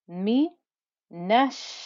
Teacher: And because it has a shadda, it effectively means that there's 2 sheens here, and I have to make enough noise and then give it enough time so that anyone listening knows that there are 2 sheens in that one place